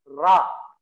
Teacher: Ra itu memiliki makhraj di dhahrul lisan, di punggung lidah yang kita letakkan di belakang gusi, antara gusi dengan langit-langit atas, ya.